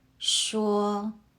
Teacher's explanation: 说 uses the first tone. Keep your voice high and steady, like you're holding a note.